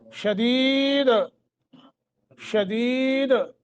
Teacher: دال کو ساکن کر کے قلقلہ کریں گے، ہاں جی، قلقلے کے ساتھ پڑھیں گے، چونکہ ساکن کر رہے ہیں نا، روک رہے ہیں یہاں، تو دال کو ہم نے ساکن کر دیا۔